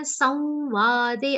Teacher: Anuswar on sa will be pronounced like a nasal va consonant. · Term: Anunasik va